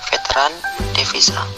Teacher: Konsonan V, kriteria bunyi labiodental geseran bersuara, contoh kata veteran, devisa.